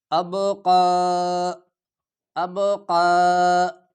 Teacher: ایک ہوتا ہے باریک قاف اور ایک ہے موٹا قاف، یہ موٹا قاف ہے، موٹا کر کے پڑھا جائے گا